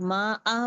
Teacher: Normal मद यूज करते हैं, 2 काउंट्स वाला मद, अलिफ मद, या मद, वाव मद यूज करते हैं।